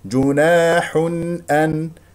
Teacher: افتح الفم في الالف التي بعد النون والحاء هنا ا مضموم تنوين ضم جاء بعدها همزه اذا اظهار جناح ان نسمع صوت النون المظهره وايضا جاء هنا بكلمه ان